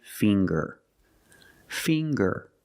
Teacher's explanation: we see the nasal sound plus the hard G